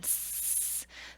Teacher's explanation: the vocal folds relax. That glottis is open and air is passing through without causing the vibration. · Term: voiceless